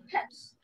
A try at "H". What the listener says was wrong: Oh, not hash. Ash. Ash.